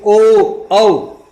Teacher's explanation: इनका उच्चारण कंठोष्य, कंठोष्य का उच्चारण कंठ यानी गले से और होंठ के द्वारा